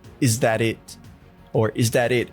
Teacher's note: I even think he drops the t- sound at the end of it so there's that uh stop T sound it is that it